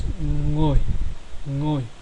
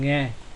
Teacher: Now the next two consonant clusters, the NG and NGS cluster, are both pronounced as ng. Ng as in sing.